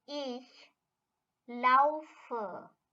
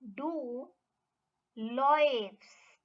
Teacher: the ah has changed to air in this conjugated form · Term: vowel change